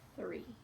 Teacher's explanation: When we have that TH sound at the beginning, we should not feel the vibrations. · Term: voiceless TH